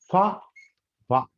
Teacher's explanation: పూర్తిగా గాలిని వదలడం లేదు కొద్దిగా సైడ్ నుంచి గాలి వస్తుంది అన్నట్టు ఓకే కొద్దిగా ఫ్రిక్షన్ అనేది ఉంటుంది ఫ్రికేటివ్ అంటే ఫ్రిక్షన్తో గాలి బయట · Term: ఫ్రికేటివ్స్